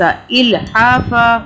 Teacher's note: اگر رکیں گے تو ہم فا پڑھیں گے، یعنی کہ فن نہیں پڑھیں گے، ایک زبر کی آواز کے ساتھ پڑھیں گے